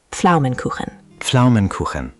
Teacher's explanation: English doesn't have this sound. You make the P and F almost simultaneously.